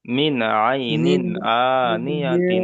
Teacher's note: সাতটি অক্ষরের মধ্যে হুরুফে, নুন সাকিনের পরে হরুফে হালকির 6টি অক্ষরের মধ্যে আইন এসেছে, তাই নুন সাকিনকে বিনা গন্যায় জাহির করে তাড়াতাড়ি পড়তে হবে